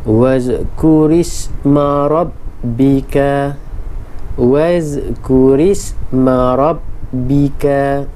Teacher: ini perlu dibaca ra pada bacaan yang nipis, iaitu ra berbaris kasrah aridah